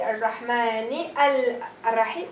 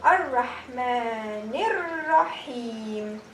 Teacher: The lam has no sukoon. I will also drop the lam.